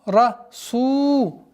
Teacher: долгота в размере двух огласовок, даммы над буквой син